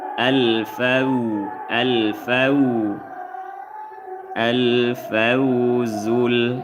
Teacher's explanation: fa atas fa wau sukun setelah fathah sebut wau lin dibaca lembut lunak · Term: wawlin